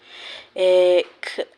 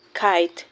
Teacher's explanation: The back of the tongue touches the soft palate.